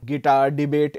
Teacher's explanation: words have the what is called the I Amic stress pattern basically having stress on the second syllable